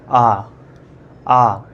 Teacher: विवृत स्वर में पूरा मुंह खुलता है